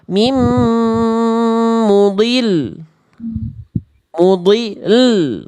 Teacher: Meninggikan bunyi lamnya. Jadi lamnya tetap dibaca sukun tapi naikin nada. Ninggiin intensitas bunyinya. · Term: naber